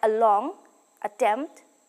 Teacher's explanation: palette to a point between the heart and the soft palate the lips remain neutral and the lower jaw is dropped the vowel is sometimes referred to as the schwa · The next central vowel is the A sound. In pronouncing this vowel, the center of the tongue rises in the direction of the hard palate to a point between the hard and the soft palate. The lips remain neutral and the lower jaw is dropped.